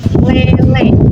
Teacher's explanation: itu ada bunyi agak tinggi yaitu bunyi yang dihasilkan dengan cara posisi lidah meninggi hampir sama dengan bunyi tinggi tetapi ini lidahnya agak mendekati langit-langit keras